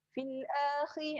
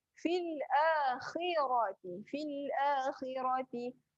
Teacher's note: Kha tebal berada di hujung kerongkong. Tebal.